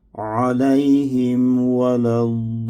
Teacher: sonda nun hərfinin qünnəsinə diqqət yetirək